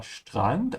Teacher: Remember to pronounce the ST like sh.